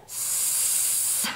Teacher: 목에 손을 대고 스 하고 발음하면 목이 울리질 않죠. 그래서 이 아이는 울리지 않고 목이 울리지 않고 바람만 나온다고 해서 새는 소리라고 불러요.